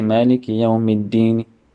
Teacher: So on the deen, the word the noon on the Yawmiddin, I read the kasra on the noon very slightly and partially